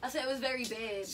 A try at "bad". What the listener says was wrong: That sounds big. big.